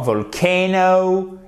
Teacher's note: à chaque fois vous avez l'accent tonique sur la deuxième syllabe